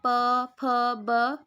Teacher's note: पवर्ग हमारे ओष्ठीय होते हैं